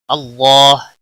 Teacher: اس میں جلالہ کے لام کو موٹا پڑھیں گے، اس کے اوپر کھڑی زبر بھی ہے، ایک الف کے برابر کھینچ کر پڑھیں گے.